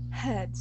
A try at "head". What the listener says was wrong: So here, what you're doing is you're pronouncing a T at the end, saying head.